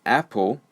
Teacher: the second syllable of Apple the schwa sound is used